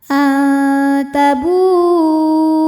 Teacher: Maka ba dipanjangkan boleh empat, boleh lima harakat. Jadi hati-hati jangan terkecoh walaupun hamzahnya ditulis dalam bentuk alif ya yang biasanya mad jaiz. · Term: mad wajib muttasil